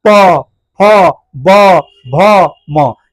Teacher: प ह फ ब भ म यानी कि दोनों ओठ क्या होता है आपस में सत्ता है तो हम कहेंगे यह ओष्ठ वर्ण है यानी कि ओष्ठ से बोला जाता है जो वर्ण ओठ से बोला जाता है उसे कहते हैं ओष्ठ वर्ण